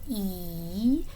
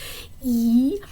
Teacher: would be described as a high front unrounded tense vowel so this symbol right here it's high which means like your